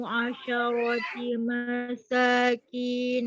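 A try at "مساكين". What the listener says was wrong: Ayo, masakin, mimnya pendek, ulangi.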